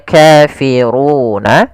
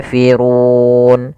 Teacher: Awalnya kafiruna karena waqaf nunnya kita matikan menjadi kafirun. Kemudian panjang untuk ru sendiri karena di sini sebelumnya ada huruf mad sebelum huruf yang dimatikan ini kita boleh memanjangkan dua harakat, empat harakat ataupun enam harakat.